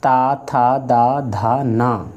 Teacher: ता था दा धा ना ये दंत से रहेंगे